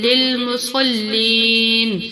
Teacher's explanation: صاد کو پر پڑھیں گے، موٹا پڑھیں گے